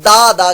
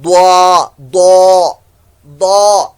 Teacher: ضاد الف زبر ضا، بالو کس کو بھی ضاد پڑھتے ہیں، ضاد الف زبر ضا ضا ضا، جیسے دا ہوتا ہے نا دا دا کیا، لیکن یہ دا دال کے مخرج سے ہے، آپ نے ضاد کا مخرج استعمال کرنا ہے، لیکن اسی طریقے سے دا جیسے پڑھا اس کی آواز کو موٹی کریں تو ضا نکلتا ہے